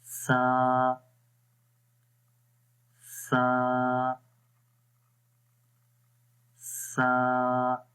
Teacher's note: Soft آواز رہے گی اس کے اندر اور اس زبان کی نوک اوپر والے دانتوں کے یعنی ثنایا علیہ کے کناروں پر لگے گی۔